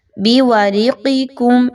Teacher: جو پہلی والی قاف ہے وہ موٹی ہے اور دوسرے نمبر پہ جو قاف آ رہی ہے وہ باریک ہے، تو قاف اور کاف کا جو فرق ہے اس کو واضح رکھیے۔